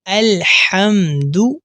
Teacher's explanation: اس لفظ کو ہا کے ساتھ نہیں پڑھنا بلکہ حا کے ساتھ پڑھنا ہے، یعنی ہمارے منہ سے الحمد اس طرح آواز نہ آئے بلکہ الحمد اس طرح آواز آئے گی۔